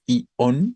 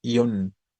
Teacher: es un diptongo y al ser un diptongo se conforma como monosílabo No no es I on sino es ion una sola sílaba